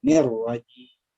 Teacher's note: Nirrajim, jangan nirrajim. Jangan ni-nya yang dipanjang, tapi langsung masuk terus.